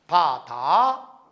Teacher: 디귿은 디귿 이 뒤에 혀가 붙는 파열음입니다